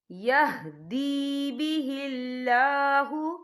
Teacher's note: یہاں اللہ کا نام باریک پڑھا جائے گا کیونکہ اللہ کے نام سے پہلے زیر ہے۔ · یہدی بہ اللہ، یہ دیکھیے یہدی، یہاں پہ یا مدہ ہو رہا ہے، یا ساکن ہے، یا ساکن سے پہلے زیر ہے، تو ہم یہاں 2 یا 3 حرکت کے برابر کھینچیں گے۔